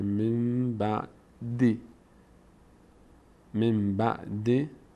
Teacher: بعد از نون با اومده نون تبدیل به میم میشه مثل زنبور نون تلفظ نمیشه میم تلفظ میشه